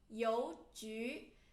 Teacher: So 邮 and 局 both second tone.